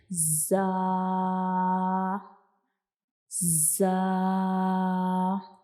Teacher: तो जा जो है ये हमारे पास एक सिटी वाला हरूफ है। यानी जब हम जा को अदा करते हैं तो जैसे सिटी की आवाज होती है उस तरह की आवाज आती है। और इसको हम अरेबिक में कहते हैं सफीरिया हरूफ।